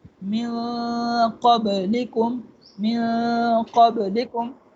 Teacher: نون کی آواز کو ناک میں چھپائیں گے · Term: اخفا